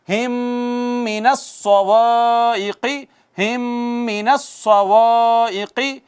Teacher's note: پھر الف مدہ ہے، پھر میم ساکن پہ اظہار نہیں، اظہار شفوی نہیں ہے، آپ دیکھیں میم ساکن کے بعد میم آئی ہے تو ادغام شفوی کیا ہوگا؟ ادغام شفوی